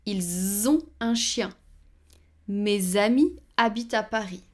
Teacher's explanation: Even though S is usually silent, sometimes it shows in the liaison.